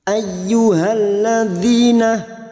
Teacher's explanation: masuk pada huruf ya yang bertasdid hanya masuk tanpa mendengung tanpa ditahan lama-lama